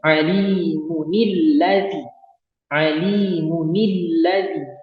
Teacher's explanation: cara bacanya itu kita hidupkan nun wasolnya, kemudian kita beri harokat kasroh. Maka bunyinya alimunilladzi.